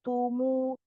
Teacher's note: Sama huruf-huruf dhamma harus sempurna ya mulutnya. Tumu jangan sampai dia imalah menjadi o ya.